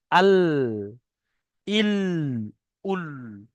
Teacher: জিভের আগার কিনারা সামনের উপরের দুই দাঁতের পাশে লাগিয়ে উচ্চারিত হয় লাম। লাম মানে জিভের সামনের অংশটায়, এতক্ষণে পাশের অংশটা হচ্ছিল, এখন জিভের সামনের অংশটা, কিনারা, সামনের উপরের দুই দাঁতের পাশে, সামনের উপরে দুটো দাঁত আছে, তার পাশে লাগাম, লাম।